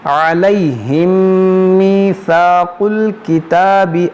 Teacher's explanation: میم ساکن کے بعد دوسری میم ہے, یہاں پر ادغام شفوی ہوگا, یعنی غنہ کریں گے